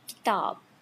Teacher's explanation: The ka sound, it is stop, voiceless, not aspirated.